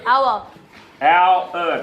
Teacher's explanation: can you hear the two vowels /õῦ/ + /ῦr/ that are blended into one vowel as in the word [our]. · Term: diphthong